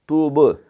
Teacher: یہ با پہ قلقلہ ہے